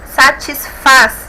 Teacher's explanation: faz se mais forte oxítona